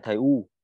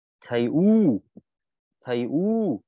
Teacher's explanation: U dài trong tiếng Việt thứ nhất nó phải dài hơn tiếng Việt 3 lần thứ hai tròn môi nhé